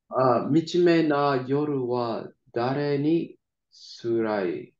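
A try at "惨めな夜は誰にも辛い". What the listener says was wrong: There should be a mo in there. Dare ni mo.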